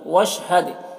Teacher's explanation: حد میں دال میں قلقلہ ہوگا